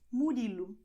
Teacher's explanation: you have the letter O here at the end. You're going to pronounce as U